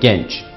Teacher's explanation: Genç kelimesindeki E kapalı bir şekilde söylenmesi lazım. Yani genç. Genç değil genç. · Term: kapalı E